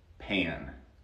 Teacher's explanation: Es como una mezcla entre la A y la E. Pero por la N se vuelve más nasal y suena casi como si fuera una E del español.